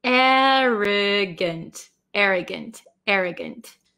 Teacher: the last vowel in a word um we change it to like almost a short i sound